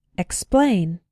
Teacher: see that in all of these words x is pronouned pronounced be careful in words like explain to include the k sound sometimes students pronounce it like esplain but that's not correct it